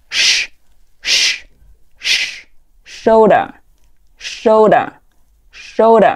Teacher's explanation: 它是一个轻辅音，只出气不出声